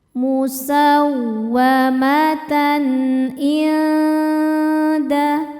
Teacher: Berikutnya ada hukum izhar halqi. Sebab ada tanwin fathah menghadapi huruf halqi atau tenggorokan yaitu ain. Maka tanwin dibaca dengan jelas.